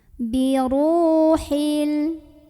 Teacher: karena ada wau sukun sebelumnya dhamah dibaca panjang dua harakat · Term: Mad Thobi'i